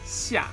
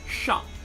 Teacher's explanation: the way you say 下, you almost like put a smile, and the voice seems to be coming at the front of your mouth